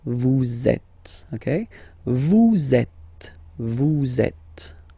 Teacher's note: vous is ending with S, and then you tend to make a little link between them. So vous êtes, z, it goes like that. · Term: liaison